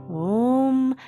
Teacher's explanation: the A and the U come together and create the O sound